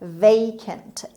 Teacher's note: A اول رو با صدای A میخونیم، A دوم رو به شکل شوا میخونیم.